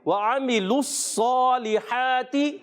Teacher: عین کی ادائیگی حلق کے درمیان والے حصے سے